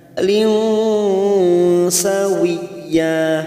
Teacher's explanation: Layalin ada kasrah tanwin, kasrotain yang bertemu sin, namanya bacaan ikhfa hakiki, kita samarkan 3 harokat. Lin sawiyya, sawi masuk pada huruf ya yang bertasdid tanpa ditekan lama-lama, hanya masuk sawiyya.